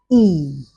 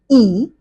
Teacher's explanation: It is closed because the level of jaw opening moves to a more closed position. It is front because the um front part of the tongue is elevated. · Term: vowel number one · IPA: /iː/